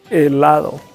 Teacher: So in Spanish, every time, not just 1 time, 2 times, every time you see H in Spanish, is silent, so that we don't pronounce H.